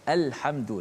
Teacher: lam qamariyah dibaca dengan izhar, maksudnya dijelaskan lam tu mati